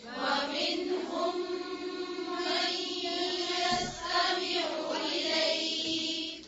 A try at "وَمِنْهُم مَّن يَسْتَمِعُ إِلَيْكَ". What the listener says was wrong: फिर से ज़ेर ज़बर को लंबा नहीं खींचे